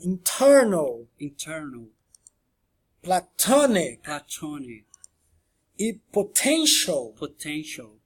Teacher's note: E agora, para a terceira coluna, a gente tem as palavras que o T está iniciando uma sílaba tônica, que é a stressed syllable. É onde que na sílaba tônica ele também é aspirado um T forte